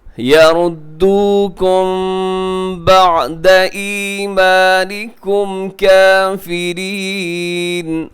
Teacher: میم ساکن کے بعد با ہے تو یہاں پہ ہوگا اخفا، جسے کہا جاتا ہے اخفاء شفوی. آپ تھوڑا سا آواز کو ناک میں رکھیے گا.